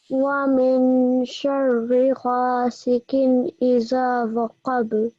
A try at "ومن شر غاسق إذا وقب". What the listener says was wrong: Just here, you didn't make that thick, okay? And the pronunciation of this letter here, you need to work on.